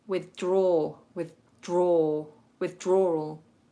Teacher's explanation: I'm just pulling the tongue back slightly but it's still pressing against the back of my top teeth · duh duh but because you're going from a th into a my tongue only ever so slightly moves but doesn't go into the clean duh sound